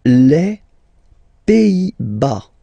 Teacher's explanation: Les Pays-Bas. Final S here, not pronounced.